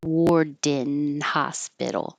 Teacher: Now you'll hear the D when it releases to the N.